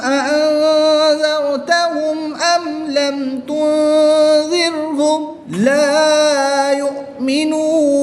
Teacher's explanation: نون ساکن میں اخفاء کا قاعدہ ہوگا، یعنی کہ غنہ کر کے پڑھیں گے